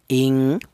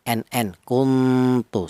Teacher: Lebih tinggi dipandang dari segi tingkat kesamarannya lebih tinggi atau ee samar lebih dominan daripada dengung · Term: ifa ala